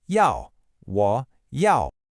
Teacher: The second, 要, is a sharp, falling fourth tone.